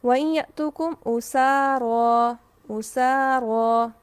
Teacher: اب سین باریک ہے تو الف باریک پڑھا جائے گا. را دیکھیے یہاں پر را ہماری شرط کے مطابق کیسے ہے، اگر ہم اس لفظ کو کھول کے لکھیں تو یہ لفظ ہے را زبر الف، را.